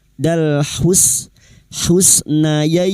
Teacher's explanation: bertemunya harakat fathah dengan ya sukun dan diikuti huruf hidup yang dibaca waqaf mad layin empat harakat kita panjangkan